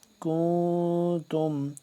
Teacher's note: نون کی آواز کو یعنی کہ ہم ناک کے اندر لے جا کر پڑھیں گے، یہ ہے اخفا۔